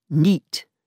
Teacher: in the Northeast, night is pronounced as neat